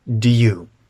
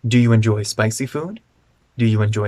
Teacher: we reduce the vowels in do you because the stress of the sentence is on enjoy